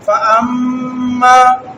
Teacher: یہاں پر میم مشدد ہے اور اس کو پڑھتے ہوئے چند لمحوں کے لیے اپنی آواز کو ناک میں روک کے رکھیں گے جسے غنہ کہتے ہیں.